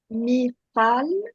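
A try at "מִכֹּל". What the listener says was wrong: O. Mikol. Là, il y a un point. Donc, on doit dire Mikol.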